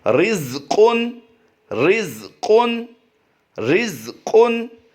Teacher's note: را کو باریک پڑھیں گے کیونکہ را کے نیچے زیر ہو، دو زیر ہوں